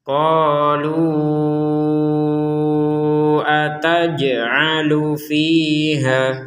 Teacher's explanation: kita ingin menggabungkan qalu dengan hamzah di sini, maka menjadi panjang 6 harokat. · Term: harokat bendera